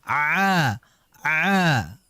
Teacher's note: tidak ada ain itu unsur keluar dari hidung melainkan tempat keluarnya itu berada di tengah tenggorokan.